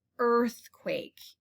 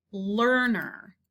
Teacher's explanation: even though it's spelled with an e a r it sounds like er and not ear